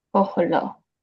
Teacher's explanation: There should have been a silent schwa here, but there's a guttural. So it took an O flavored reduced vowel to let you know that it's vowel harmonizing with a kamatz katan O flavored short vowel.